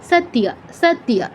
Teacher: দন্তস্বর পর ত, সৎ, তারপর ইয়, সত্য। এখানে ত আর ইয়কে আবার আলাদা করে ফেললে হবে না, খুব দ্রুত উচ্চারণ করতে হবে যেহেতু দীর্ঘস্বর নেই